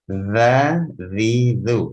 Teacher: Mengucapkan huruf zal dengan menempelkan ujung lidah ke ujung gigi seri atas, seperti kita mengucapkan huruf tha.